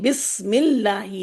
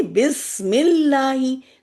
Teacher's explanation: لفظ اللہ کا یہ جو حمزہ ہے، یہ بھی وہ والا حمزہ ہے جو کہ پیچھے سے ملا کے پڑھنے کی صورت میں نہیں پڑھا جاتا